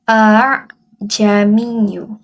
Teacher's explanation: Bacaan hamzah yang kedua adalah kurang jelas. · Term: tashil